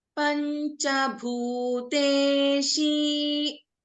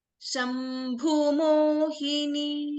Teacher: in Panchabhuteshi, Bhu is a Dirgha, and in the last word, Shambhu Mohini, here Bhu is a Hrasva.